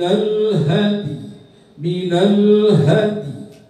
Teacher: Dalnya dibaca setengah harkat, ya-nya setengah harkat. Dan dal setengah harkat itu mentad'ifkan, melemahkan sifat qalqalah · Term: waqaf rom